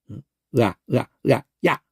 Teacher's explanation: 의아를 동시에 내면 야가 되는. 의아 하다가 동시에 붙여버리면 빨리 붙여버리면 야가 돼요. 의아 야 이렇게. 의어를 빨리 하면 야 이렇게 돼요. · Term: 복합 모음